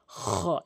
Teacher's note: এরপরে খ, খ, আমার সাউন্ডটি আশা করি বুঝতে পেরেছেন, এভাবে উচ্চারণ করবেন খ, অর্থাৎ জিহ্বার হলকের হলকের শেষ থেকে, হলকের শেষ থেকে, জিহ্বা নয়, হলকের শেষ থেকে